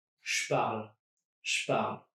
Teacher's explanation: So I'm turning that je into a sh.